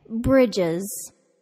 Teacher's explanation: I can't even say the plural of bridge without adding an extra I sound before the plural S. So we add the extra syllable to say bridges.